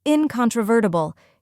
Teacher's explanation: var, which rhymes with fur and is stressed. Finally, t-bool, where t sounds like tick and bool sounds like bulb.